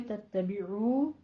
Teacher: दोनों होंठों को गोल करके अदा कीजिए, वाव मद्दा खींच के पढ़ना है